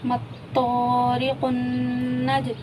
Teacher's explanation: जीम पर देखें हुर्फ़ कलकला हो रहा है, क्योंकि हुर्फ़ कलकला में से जीम साकिन आ गया तो यहाँ पे हम कलकला करके पढ़ेंगे।